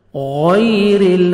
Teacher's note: را نیچے زیر ہے، را کو آپ نے باریک پڑھنا ہے اور لام کے ساتھ آپ نے ملانا ہے، ہلانا نہیں ہے